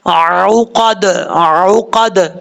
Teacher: دال حروف قلقلہ میں سے ساکن ہے تو یہاں پہ قلقلہ ہوگا